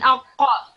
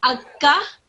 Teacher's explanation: for the Qaf, the second one, your mouth also rounds. But however, for the first one, it isn't round. It just simply opens when you say this letter.